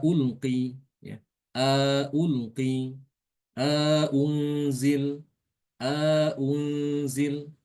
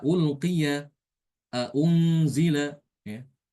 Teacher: Karena di situ ada idkhol, ada istilah idkhol yaitu memasukkan alif di antara kedua huruf hamzah tersebut